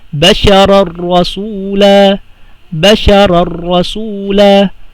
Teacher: Diretso ka lang sa ra nang walang gunna.